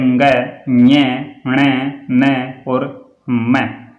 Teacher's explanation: इन ध्वनियों को बोलने से वायु मुख व नाक दोनों से निकलती है, तो नासिकेय व्यंजन कहा जाता है।